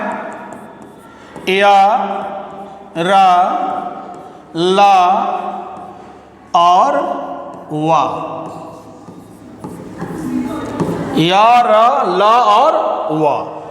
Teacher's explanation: मतलब स्वर और व्यंजन के बीच इसका उच्चारण होता है और इसको उच्चारित करते समय इसका उच्चारण करते समय हमारे स्वास की जो गति है वह कम हो जाती है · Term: अंतस्थ व्यंजन